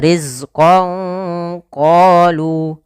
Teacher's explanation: Maka samarkanlah suara nunnya kepada huruf qaf.